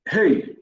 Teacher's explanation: Você pronuncia, você vê que não tem aquela paradinha de separação silábica. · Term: Ditongo